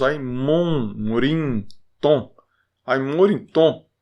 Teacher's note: O M nasaliza a da frente. Então, por isso que mesmo sem tio, nós falamos ai, morim, tom.